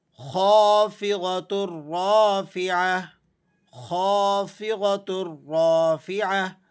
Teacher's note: خا یہ حروف مستعلیہ میں سے ہے، آپ نے اس کو موٹا پڑھنا ہے، اور اس کے بعد الف آ گیا، اب آپ الف مدہ کی رعایت کرتے ہوئے اسے ذرا کھینچ کر پڑھیں گے۔